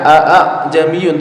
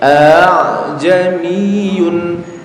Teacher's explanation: Ini tidak dibaca a' jamiyun tapi a jamiyun. A yang pertama jelas, yang kedua diringankan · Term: tashil